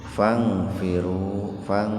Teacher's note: itu ihfa akrob itu, jadi dibaca samar, nun mati ketemu fa, cuman dikarenakan dalam satu kata maka dibaca samarnya sepintas saja.